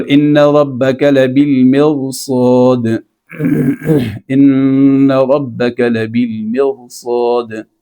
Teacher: چونکہ اس را کے بعد صاد آ رہا ہے حرف مستعلیہ، اس لیے اس را کو آپ نے باریک نہیں پڑھنا ہے، پر پڑھنا ہے